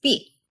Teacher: korean p last but not least there's the so-called tense consonant this one is totally unaspirated so you're starting the vowel as soon as your lips pop open